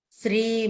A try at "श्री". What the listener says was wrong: Shri. Don't say Sri. Sri and Shri have.